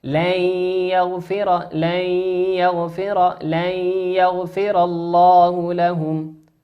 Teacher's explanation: والياء من حروف الإدغام بغنة، يغن بمقدار حركتين